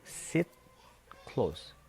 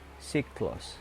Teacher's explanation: Jadi sit dengan te dia menjadi ke. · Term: asimilasi